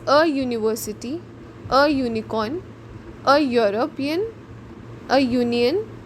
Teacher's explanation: In university the sound is यू, not ऊ. यू की sound आ रही है विच इज़ वाई.